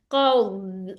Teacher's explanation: इसकी special quality है, इस्तितालत होती है, यानी बहुत ज्यादा आवाज चलती है